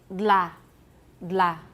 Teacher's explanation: Then we have a lateral release, dla.